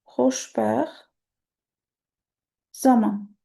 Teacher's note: Yəni ortadakı t düşür